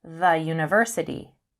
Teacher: in university, it sounds like it begins with a y.